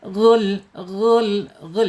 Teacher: Maudiul jaub yaitu alirannya harus ke mulut ya tidak boleh melalui hidung. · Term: mad thobi'i